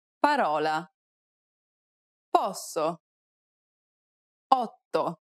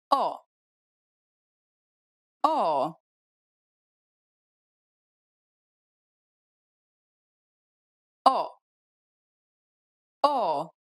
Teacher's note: It's identical to the OU sound in the word ought. This is an open sound, so be sure to widen your mouth.